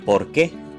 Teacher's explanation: El acento en la E claramente indica que dicha sílaba o vocal se pronuncia con mayor fuerza. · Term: sílaba tónica